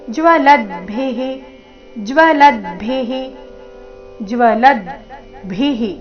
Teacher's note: ಕೊನೆಗೆ ರಸ್ವಭಿ ಮಹಾಪ್ರಾಣ ಅದರ ನಂತರ ವಿಸರ್ಗದ ಉಚ್ಚಾರಣೆ ಹಿ ಎಂದು